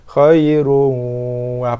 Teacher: Kita idghamkan bacaan khairun daripada asalnya khairun kepada khairun wa, idghamkan bacaan, masukkan bacaan ke dalam waw ma'al gunnah berserta dengung. Khairun wa, panjang sikit. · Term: idgham ma'al gunnah